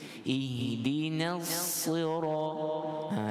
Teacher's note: masuk kepada sad, dia tak bertukar jadi tebal, dia masih lagi nipis.